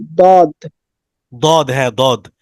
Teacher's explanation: জিহ্বার গোড়ার কিনারা উপরের মায়ের দাঁতের সাথে লাগে, গোড়ার কিনারাটা উপরের মায়ের সাথে লাগবে।